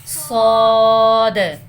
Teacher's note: موٹا کر کے بیٹے سیٹی کی آواز کے ساتھ